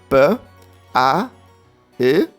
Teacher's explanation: the simple voiceless labial stop